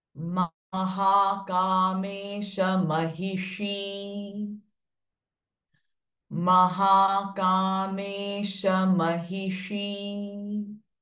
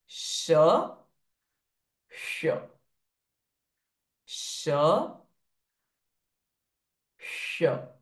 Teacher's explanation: Now, if you can see, this S is also having dot underneath. And this sound is a retroflex sh sound. So we cannot say sir or sh, but sh.